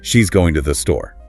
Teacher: And with a sharp rise and fall, it could even be an exclamation.